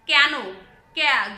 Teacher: জফলা আকারের মতো উচ্চারণ হচ্ছে, ক্যা ক্যা হয়ে যাচ্ছে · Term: সংগৃহীত